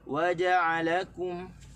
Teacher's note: kita tak boleh tekan di waw, kita tekan di ja'ala, kita tekan di kaf.